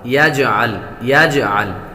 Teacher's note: یجعل جیم حروف قلقلہ میں سے ہے، جب حروف قلقلہ ساکن ہوں تو ان میں خوب قلقلہ ظاہر ہوگا